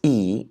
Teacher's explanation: so this is e in English right so it's front and high